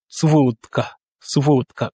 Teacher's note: vous remarquez que le D se prononce comme un T. C'est dû au fait, au phénomène d'adoucissement.